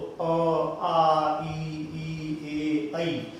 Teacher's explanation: जिनको बोलते समय हमारा मुख वृत्त की तरह गोल नहीं होता है, उन्हें कहेंगे अवृत्ताकार स्वर। तो अ आ ई ए ऐ, तो ये हमारे अवृत्ताकार स्वर है, पहचान लेंगे।